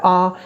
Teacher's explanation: विवृत स्वर एक ही होता है आ, मुंह खुला ही रहता है, जिह्वा बिल्कुल भी ऊपर नहीं उठती है